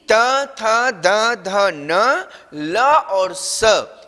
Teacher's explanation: ऋतुलसानाम दंता, दंता अर्थात दांत, री, त थ द ध न, ल और स, इनका उच्चारण स्थान दांत है